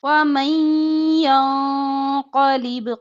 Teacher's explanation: नून साकिन के बाद या रहा है यरमलून में से है तो इदगाम गुन्ने के साथ